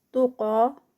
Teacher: قاف جو ہے وہ ہیوی ہے اور اس کے ساتھ اس کا 2 کاؤنٹس کا اسٹریچ ہے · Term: قاف ہیوی